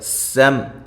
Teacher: سم سین کو سیٹی کے ساتھ میم ساکن کا اظہار